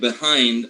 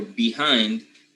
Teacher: Either transcribing or pronouncing lax E or schwa in the word behind or behind is exactly the same.